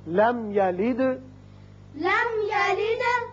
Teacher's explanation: یہاں میم ساکن ہے، اظہار شفوی ہوگا. دال ساکن ہے، صفت قلقلہ.